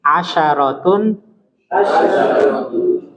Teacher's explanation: Jangan ditasdidkan shinnya, ya.